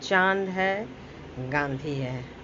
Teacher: अनुनासिक में नाक से कम, मुंह से ज़्यादा हवा निकलती है